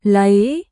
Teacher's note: Falling rising tone. Down with intention, then up with the claim.